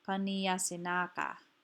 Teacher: knee is stressed and lengthened because it's open and it's stressed it's not at the end of a word